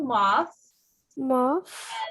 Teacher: put the tongue between the teeth and you blow